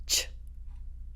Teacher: your tongue goes into the exact spot for a t and then you put a shh after it